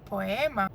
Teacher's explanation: So the I as a weak vowel is short, where the word poema, O and E, which are both strong vowels, you pronounce them usually. So both of them have their full sound.